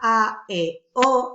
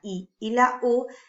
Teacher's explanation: al pronunciar la A, E, O, abre la boca, y sin embargo, cuando pronunciamos la I y la U, está un poquito más cerradita la boca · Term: vocales fuertes